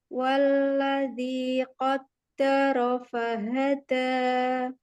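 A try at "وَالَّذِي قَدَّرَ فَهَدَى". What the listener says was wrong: Baik, di dal yang kedua pada kata qaddara, kuatkan lagi syiddah dia.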